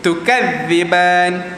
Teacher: Ta ni angin dia agak lemah. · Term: huruf ta